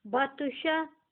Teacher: یہاں پر تو ساکن بھی آیا ہے تو اس لیے یہاں پر جھٹکا لگے گا کیونکہ حروف کلکلا یہ بن گیا ہے.